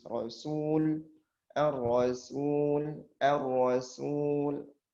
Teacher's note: ar-rasul kita harus tipiskan betul-betul tipis.